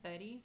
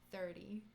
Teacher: Like, we don't pronounce our R's.